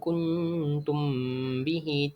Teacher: Di dalam ayat ini terdapat hukum ikhfa syafawi pada perkataan kuntum bihi. Ya, ikhfa syafawi ini dia berlaku apabila huruf mim mati bertemu huruf ba yang berbaris. Cara bacaan dia kita perlulah mendengungkan huruf mim ini dengan kadar 2 harakat.